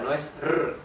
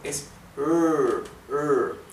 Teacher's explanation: la R inglesa no es una R dental como la del español